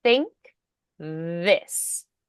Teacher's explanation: All right, so we're going to do some minimal pairs, voiced versus voiceless. Think is going to be unvoiced, and then this, voiced.